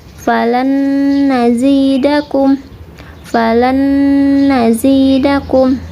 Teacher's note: ini nun masuk ke dalam nun yang kedua, ditahan 2 harokat, kemudian dirasakan masuk ke hidung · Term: idgham bigunah